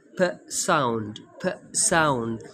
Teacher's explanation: the sound p in pat is produced by closing the lips and then releasing air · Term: bilabial sound